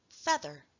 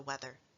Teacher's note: the voice th sound in the middle of words in the medial position